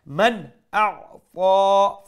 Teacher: we'll pronounce the nun sakin with clarity, with izhar. Man a'ta, fa is a full mouth letter, and plus we stretch it one alif long.